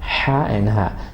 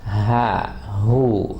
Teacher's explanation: Second letter, the sound comes from the bottom. حلق کا وہ حصہ جو سینے کے ساتھ ملتا ہے